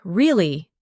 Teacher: when you ask a question like, Really? your voice goes up slightly at the end. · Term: intonation